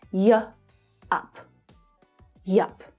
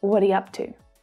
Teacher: So you really just hear you as the y sound.